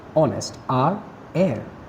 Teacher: the words hour, honest, heir begin with a vowel sound as the initial consonant h is not pronounced. Yes, even if they have h, which is a consonant in the start, still they start with a vowel sound.